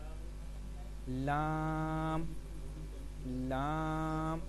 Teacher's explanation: لام، نون اور را کا جو مخرج ہے، سب سے پہلے لام کا دیکھتے ہیں۔ زبان کا کنارہ اور دواحک سے ثنایا تک کے مسوڑوں سے ادا ہوتا ہے۔